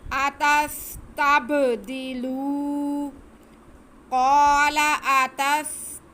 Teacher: आगे लाम पे पेश और वाव साकिन है, तो ये वाव मद्दा हो गया, इसलिए हम लाम की आवाज़ को खींचेंगे।